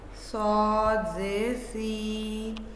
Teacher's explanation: सौद ये मोटी आवाज़ है और ज़ुबान की जड़ ऊपर उठती है और मुंह भरकर इसकी आवाज़ अदा की जाती है।